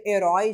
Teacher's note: ela é uma oxítona terminada com ditongo aberto. Então ela vai ser acentuada.